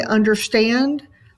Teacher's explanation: unstressed syllables and a stress syllable so if you say understand the stand part of it comes up in your voice